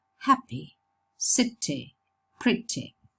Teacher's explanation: It's a weak fleas. It's shorter. And it's a bit more tense than the kit. And we use that symbol for the weak fleas, which occurs in unstressed syllables, especially at the end of words.